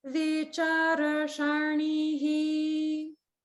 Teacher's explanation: the upper swara is on the cha syllable. It's not on the r or the sha.